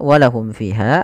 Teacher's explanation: izhar jelas syafawi berkaitan dengan bibir kita karena makhraj huruf mim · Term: izhar syafawi